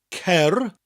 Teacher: So we start with that k sound, cer, with the rolling R, cer. The double D gives us a th sound, and the final D at the end gives us a d, cerdded.